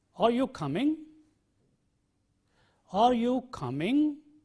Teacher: questions for which the answer is either yes or no are said with a rising tone